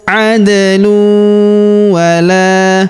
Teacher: Kemudian tanwin huruf lun bertemu huruf waw berharokat tasydid, maka tanwin unnya melebur masuk ke huruf waw yang berharokat tasydid. Kita tahan dan kita tekan serta kita dengungkan 2-3 harokat.